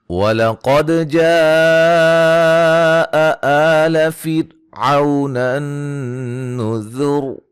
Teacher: قاف کو موٹا، دال پہ قلقلہ، جیم پہ مد واجب، مد اصلی، را کو باریک، عو وولین، نون مشدد پہ غنہ، را کو موٹا، ٹھیک ہے، وقفاً وصلاً را موٹی ہوگی۔